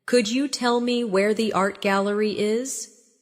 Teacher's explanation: In connected speech, could you becomes could ya.